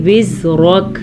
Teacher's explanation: اس چیز کا آپ نے دھیان رکھنا ہے کہ کاف کو باریک پڑھنا ہے